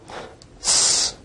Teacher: S is a voiceless alveolar fricative